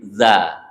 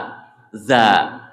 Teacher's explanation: keluar hurufnya itu ada di ujung lidah dengan ujung gigi seri atas